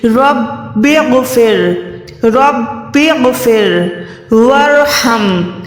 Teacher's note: غین جو ہے حلق کے اوپر والے حصے سے عطا ہوتا ہے، اور یہ موٹا حروف ہے